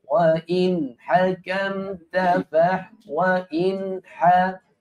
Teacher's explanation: Dia tak boleh bertemu tu nun dengan ha. Sebab nun makhraj lidah. Ha makhraj tekak.